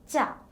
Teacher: tongue are in contact with the teeth and the gum laterally the breath carries no vibration of vocal cords no air passes through the nasal cavity